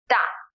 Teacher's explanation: it is an aspirated T